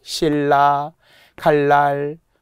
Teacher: 니은 하나 리을 하나가 만나면 보통은 리을 리을로 가야 돼. · 다시 한번 유음화. 유음이 아닌 소리가 유음으로 변하는 건데 유음이라는 게 리을이에요 · 결국 리을리을이 되게 돼 있는게 원칙